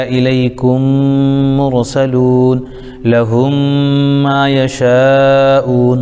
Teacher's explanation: میم کو میم سے ملا کر غنہ کے ساتھ پڑھا جائے گا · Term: ادغام شفوی